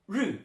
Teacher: So ru, fourth tone, ru means to enter